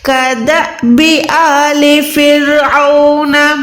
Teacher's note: اس کے بعد آل، یہ الف پہ کھڑی زبر ہے، ال نہیں ہے، ٹھیک ہے، الف کھڑی زبر آ، اس کو ہم نے 1 سیکنڈ لمبا کرنا ہوتا ہے